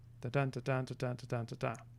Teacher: in iambic pentameter, the basic form is weak strong, weak strong, weak strong, weak strong, weak strong. So iamb is weak strong, and pentameter is 5 of those.